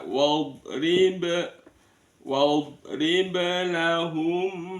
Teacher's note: ada mim sukun bertemu dengan mim, namanya idgham mimi atau idgham mislain